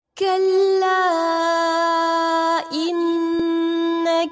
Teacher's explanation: کلا ان مد منفصل ہے، 3 سے 4 حرکات جتنا لمبا کریں گے